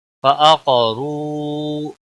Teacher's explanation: فعقروا قاف حروف مستعلیہ میں سے ہے، اس کو موٹا پڑھیں گے. را کے اوپر پیش ہے اس لیے را کو بھی موٹا پڑھیں گے، اور واو مدہ ہے، ایک الف کے برابر کھینچ کر پڑھیں گے.